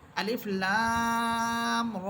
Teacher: আলিফ একটি হরফ, লাম একটি হরফ, র একটি হরফ। এখানে লাম হরফের উপরে আসছে মোটা চিহ্ন, এখানে আমাদেরকে চার আলিফ টেনে পড়তে হবে